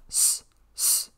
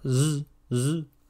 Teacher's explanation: S, S is voiceless, but Z, Z is voiced